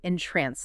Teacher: you entrance them with the emphasis on the second syllable